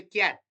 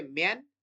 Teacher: When you say cat that a is not nasalized but when you say man that a is nasalized